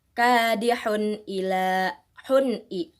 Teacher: ada domatain yang bertemu dengan huruf alif, maka cara bacanya adalah dengan jelas